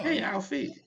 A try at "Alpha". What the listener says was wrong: It's not Alfie. It's Alpha.